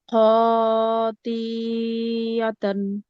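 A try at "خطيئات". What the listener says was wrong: আপু খয়ে তো টান নাই, খেয়াল করেন। সাথে পড়েন। খতি এতান। আপু একটু খেয়াল করেন, খ জবর খ, এটা কি বলেন তো? খ জবর খ, এটা কি? না, তাহলে আপনি টানতেছেন কেন? টানবেন না, সিম্পল পড়বেন।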